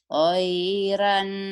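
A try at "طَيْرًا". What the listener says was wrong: Orang Padang, orang Medan. Tairan. Toiron, Bu. O, bunyi O. Toiron.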